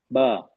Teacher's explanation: हमारी जो जो टंग पोजीशन है ना वो रेस्ट पे है टंग का इन्वॉल्वमेंट इसमें नहीं है इसमें सिर्फ इन्वॉल्वमेंट क्या है हमें मुंह खोलना है दैट्स ऑल